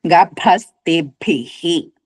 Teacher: భ రెండు భాలు కూడా మహాప్రాణాలు